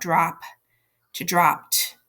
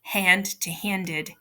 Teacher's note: So if you think about drop to dropped, you can hear the t, right? Hand to handed, you can hear the id, and spell to spelled, you can hear the d.